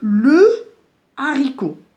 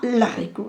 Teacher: il n'y a pas d'élision. C'est-à-dire, on va considérer H ici comme une consonne. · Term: H aspiré